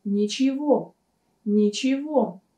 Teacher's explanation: здесь вы можете заметить, что букву «г» мы произносим как «в»